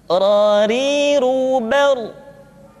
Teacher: Berikutnya adalah huruf ra, diucapkan dengan menyentuhkan punggung lidah dengan langit-langit.